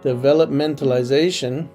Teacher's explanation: So when you append ization to developmental, the tonic now falls in penultimate position. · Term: paroxytones